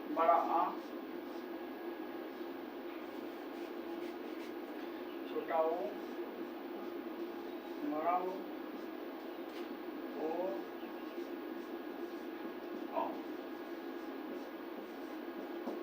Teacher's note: ये स्वर जीवा के जो है पिछले भाग से बोले जाते हैं। इसलिए इन्ह पश्च स्वर बोलते हैं।